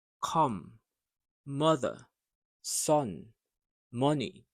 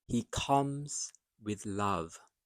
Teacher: sometimes the letter O sounds like uh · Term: short U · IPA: /ʌ/